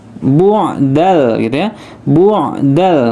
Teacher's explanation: ain dia lebih ditekan ke pangkal tenggorokan